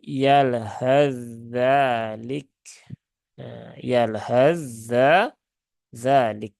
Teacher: dia tidak dibaca dengan izhar Tetapi dia dibaca dengan Idgham sehingga tsanya ini dimasukkan ke huruf Dal secara sempurna